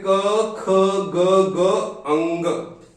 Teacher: पहला वर्ग है क वर्ग। क वर्ग जिसका उच्चारण होता है कंठ से।